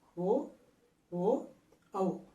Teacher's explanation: అంటే చూడండి, ఓ ఓ ఔ అంటే కంఠం దగ్గర ప్రయత్నం చేస్తున్నాం. ఆ గాలి ఇక్కడ పెదవుల దగ్గర వచ్చేసరికి పెదవులను కూడా రౌండ్ షేప్లో మనం మార్చుకొని ఓ ఓ ఔలను పలుకుతున్నాం. అంటే కంఠము ఓష్టము, ఓష్టం అంటే పెదవి. · ఓ ఓ ఔ ఇవి పలికేటప్పుడు కంఠము తర్వాత పెదవులు కూడా సహాయపడుతున్నాయి. అంటే చూడండి, ఓ ఓ ఔ అంటే కంఠం దగ్గర ప్రయత్నం చేస్తున్నాం. · ఇక్కడ పుట్టినటువంటి శబ్దము ఇక్కడికి వచ్చేసరికి ఓ ఓ ఔ అనబడేటటువంటి ఒక రూపాన్ని సంతరించుకుంటుంది. కాబట్టి ఓ ఓ ఔలను పలకడానికి కంఠము ఓష్ట్యము రెండింటి యొక్క సహాయం కావాలి. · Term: కంఠోష్ట్యములు